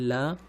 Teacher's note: जब आप ल का उच्चारण करेंगे ल, तब हवा जो है वो जीभ के दोनों पार्श्व से निकलता है। पार्श्व मतलब जीभ के दोनों अगल बगल से, ल, इसलिए ल को, केवल ल को पार्श्विक व्यंजन कहा जाता है।